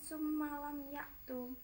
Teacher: gunnah sebab huruf mim ditasydid · idhar syafawi sebab mim sukun bertemu huruf ya